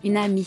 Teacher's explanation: The enchainment takes place when a word ending with a pronounced consonant is followed by a word beginning with a vowel, and the consonant and vowel are combined into one syllable